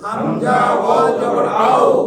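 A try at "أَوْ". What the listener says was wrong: দুই ঠোঁট লাগতেছে না আও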